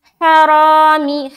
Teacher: را کو موٹا رکھتے ہوئے الف مدہ کریں گے